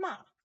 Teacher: And ma, it's a 4th, that's a 4th tone. It's a sharp falling tone.